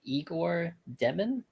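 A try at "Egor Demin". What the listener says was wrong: Igor it's not Igor. It's like Jaeger. It's like Jaeger.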